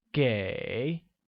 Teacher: Give will become 给, which is pronounced with a falling rising tone